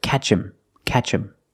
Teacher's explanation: When I say catch him, him is not a stressed word, so the H is silent. So you hear catch him, catch him.